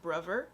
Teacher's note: for the th sound you guys change it sometimes to the v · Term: th fronting